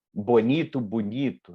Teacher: a vogal O é uma vogal média, ela passa para U, que é uma vogal alta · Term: alteamento